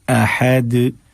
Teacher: दाल को थोड़ा सा जोर के साथ हमें अदा करना पड़ेगा जब हम अपनी आवाज रोक रहे हो, वक्फ कर रहे हो